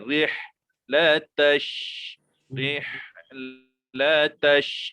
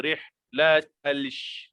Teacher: Kita tak baca macam tu. Kita terus masukkan ta di hujung ini kepada shin.